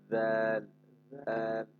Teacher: জাল পাতলা আওয়াজ, একটা জিহ্বার আগার থেকে পাতলা আওয়াজ উচ্চারণ করতে হবে। জাল, জাল। জাল আবার যার সাথে মিলাবো না, জাল পাতলা আওয়াজে।